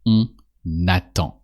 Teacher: Here it's a spoken French video, so we're going to only use the on to say we. And when you use on and just after the following word starts with a vowel, you have to pronounce the N of on. So we say on attend.